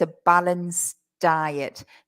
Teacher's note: in the pronunciation it's not easy to hear that D